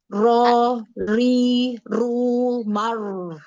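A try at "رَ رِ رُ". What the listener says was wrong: Ya, ro-nya dijelaskan lagi. Huruf ro-nya masih kurang jelas ya. Huruf ro.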